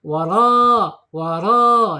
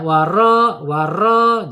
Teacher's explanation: Rnya harus ditebalkan waro waro ya karena harakatnya fatah ya fatah dan getarannya tidak boleh lebih dari dua